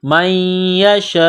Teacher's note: نون ساکن کے بعد یا ہے، یا کے اوپر تشدید ہے تو یا کو دبانا ہے، میم کو یا کے ساتھ ملانا ہے، من یشاء، یہ لمبی مد ہے، 4 الف کے لمٹ میں کھینچنا ہے.